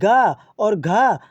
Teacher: गा और घा आपकी कंठ ध्वनियाँ हैं जो कंठ से बोली जाती हैं